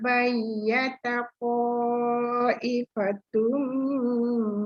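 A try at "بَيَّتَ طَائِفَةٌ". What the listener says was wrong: To tu panjangkan sikit lagi.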